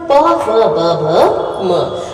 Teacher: आप देखेंगे आपके लिप्स जो है इन वर्णों को उच्चारित करने में मदद कर रहे हैं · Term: ओष्ठ्य वर्ण